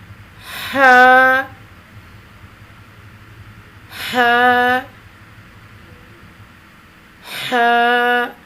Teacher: حلق کی طرف مضبوطی کے ساتھ دباتے ہوئے باریک اور رگڑ کھاتی ہوئی سانس میں پڑھیں گے